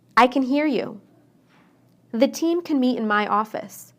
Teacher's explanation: don't then what was different it's how the a is pronounced when I say can inside the sentence I shortened the a